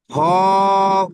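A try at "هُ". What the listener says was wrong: জি, হাডি, মুখ লম্বা করে পড়ুন। হা, হ বলছেন আপনি, হা ওডি হবে, হা, ও, পেশ, হু।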